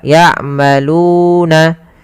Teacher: ada huruf waw mati, yaitu didahului dengan huruf dhammah, namanya mad tabi'i, panjangnya 2 harokat